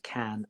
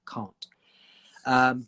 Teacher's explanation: if you're from London, we would say can, like the an sound, can, and can't with an R sound